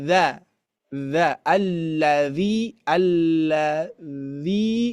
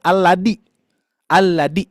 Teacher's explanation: huruf dza ujung lidah menempel ke gigi seri atas